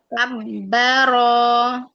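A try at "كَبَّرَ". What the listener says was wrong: Bukan kabba. Itu baknya orang Jawa. Bukan kabba, tapi itu kan ba ya. Ba di sini itu pakai bibir basah antara basah dengan kering. Jadi antara basah dengan kering, kedua bibirnya dikatupkan.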